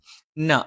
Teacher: മേലെ ചുണ്ട് അല്പം പുറത്തേക്കും താഴെ ചുണ്ട് അല്പം ഉള്ളിലേക്കും ചേർന്നു നിൽക്കും ന നാവിന്റെ അറ്റം മേലെ മുൻപല്ലിന്റെ മോണയിലാണ്